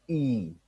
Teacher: This is when we talk with our front, but our tongue will be high, as in E. When we pronounce E, our tongue will be close to our palate. but that will be produced from our front.